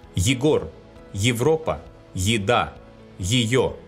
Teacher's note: At the beginning of the root, unstressed ye is pronounced as ye.